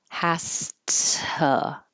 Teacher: This T stays a T because the S before it is voiceless. So my voice is off, has to.